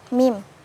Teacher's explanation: cara mengucapkannya dengan menyentuhkan bibir atas dan bawah sambil mengalirkan suara dari rongga hidung.